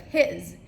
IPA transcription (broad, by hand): hɪz